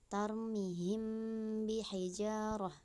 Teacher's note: Artinya pada saat membaca mim sukun disamarkan antara mim dan ba dan terdengar seperti didengungkan. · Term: ikhfa safawi